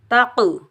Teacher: قاف حروف قلقلہ میں سے ساکن حالت میں تلاوت کے دوران آ رہا ہے تو یہاں ہم چھوٹا قلقلہ کریں گے، قلقلہ صغریٰ، اور بغیر کھینچے پڑھیں گے۔